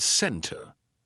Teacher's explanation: I love how it illustrates the T that is not pronounced, or like the word center, right? It sounds like there is no T at all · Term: silent T